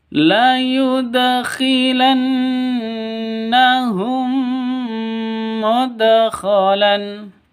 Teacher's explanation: Mim mati bertemu dengan mim. Mim mati bertemu dengan mim ini langsung masuk ke mim yang kedua disertai dengung. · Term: idgham mimi